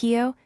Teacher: the aspirated K plus eo, another tall vowel, giving kyo, said with a puff of air